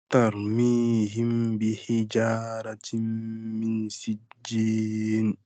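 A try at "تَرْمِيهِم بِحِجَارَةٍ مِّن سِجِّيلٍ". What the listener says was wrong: Alors, min sijjil, j'entends pas. Voilà, laisse bien le L sortir. Min sijjil. L, fais bien le L, parce qu'on n'entend pas bien.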